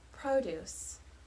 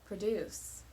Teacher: produce with the stress on the first syllable refers to vegetables whereas produce with the stress on the second syllable is the verb